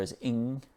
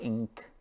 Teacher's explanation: It's kind of like your tongue goes to the back of your mouth and touches the top of your mouth. So ing, and it's not ink, it's ing.